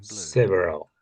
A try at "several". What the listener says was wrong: yeah, several. I think it's saying sever. I think it's saying several. Sort of thing. It's more several.